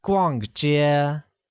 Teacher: I like shopping, which literally translates as 我喜欢逛街. Where 逛街, pronounced using a falling tone on A and a high level tone on E